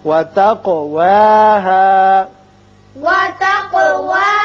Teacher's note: قاف چونکہ مجزوم ہے اس لیے اس کی صفت قلقلہ ادا کریں گے